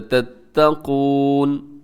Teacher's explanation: چھوٹی مد منفصل، یا الگ ہے، اولیل الباب الگ ہے. لعلکم تتقون، قاف موٹا ہے آخری لفظ کے اندر، تتقون.